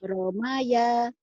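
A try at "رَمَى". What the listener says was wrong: Romaya, pendek.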